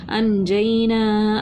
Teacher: الف مدہ کو ایک الف کے برابر کھینچ کر پڑھا